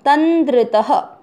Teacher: फिर है द्र का अर्थ हुआ द आधा और र पूरा, उस पर ई की मात्रा लग जाएगी तो क्या बन जाएगा, द्रि, तंद्रि, और त लास्ट वाला भी पूरा उसमें अमिक्स करना है, तंद्रित। त में अ की मात्रा तो विसर्ग को पढ़ेंगे ह